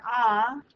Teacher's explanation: it's relatively far down and back in the mouth but it's not all the way down here for example that's just not physically possible.